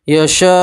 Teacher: مد متصل ہے اس لیے 4 الف کے برابر آپ مد کو کھینچیں گے